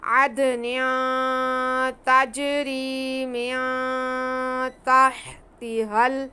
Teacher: उसके बाद हा हल्की है, इसको ध्यान से अदा करेंगे। पहले हलक के सेंटर वाली हा, उसके बाद हलक के शुरू के हिस्से वाली हा, तो दोनों में वाज़ेह फ़र्क करेंगे